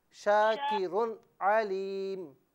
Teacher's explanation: شاکرن میں جو تنوین ہے اس پر غنہ نہیں کرنا